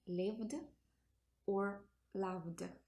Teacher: if the final sound of the infinitive is voiced, it means that there is vibration of the vocal cords. In this case, the pronunciation of ed is d